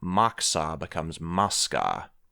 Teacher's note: there was a suffix like Maxo then if there was metathesis so that a coda stop will swap places with the following fricative